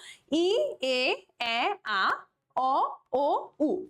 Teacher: আমাদের মুখটা কিন্তু আস্তে আস্তে ওপেনিংটা বড় হচ্ছে